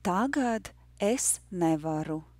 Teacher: The rhythm is yes, no, yes, yes, no, no.